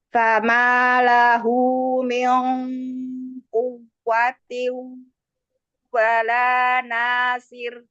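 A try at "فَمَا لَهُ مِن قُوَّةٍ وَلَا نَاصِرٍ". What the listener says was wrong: Ya, lebih baik sedikit ya. Tinggal dibiasakan, Bu ya.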